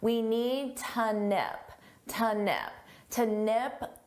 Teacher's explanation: Notice how to becomes more of an unstressed t.